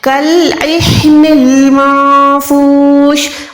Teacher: عین حلق کے درمیان سے, ہا حلق کے نیچے والے حصے سے. ٹھیک ہے, یہ جو ہے وہ والا ہا نہیں ہے, یہ والا ہا نہیں ہے, یہ ہا ہے ہاتھی والا, یعنی سینے سے ادا ہوگا.